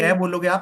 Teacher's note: कै बोलोगे आप, कंपन नहीं लगेगा। खे बोलोगे, कंपन नहीं लगेगा। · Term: अघोष